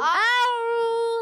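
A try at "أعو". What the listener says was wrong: پہلے حمزہ کو کلیئر کرنا، حمزہ حلق کے نیچے والے حصے سے، عین حلق کے درمیان والے حصے سے، تو حمزہ اور عین دونوں کلیئر کرنے۔ اعو،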